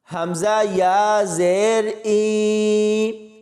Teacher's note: اس حمزہ کو یا کے ساتھ ملائیں گے، یا مدہ ہوگی اس کو کھینچ کر پڑھیں گے